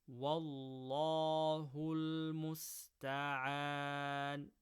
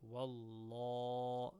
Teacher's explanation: So remember to make it nice and full. Wallah, by lifting the back of the tongue up. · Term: full mouth